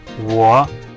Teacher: make it sound stronger with a dip